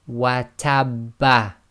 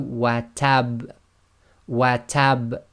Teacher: slight echo must be audible, must be intense, but must not be converted into a fatha.